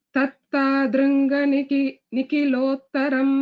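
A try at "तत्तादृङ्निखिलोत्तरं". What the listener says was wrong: That is together, not tattadrungani. Tattadrungniki.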